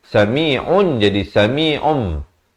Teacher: menukarkan daripada bunyi nun kepada bunyi mim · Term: iqlab